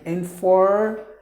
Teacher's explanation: the Americans would pronounce the letter R saying informative